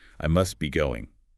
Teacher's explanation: The T in must is often deleted because it sits between the S of must and the B of B. The cluster SDB is just simplified to SB. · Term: consonant cluster simplification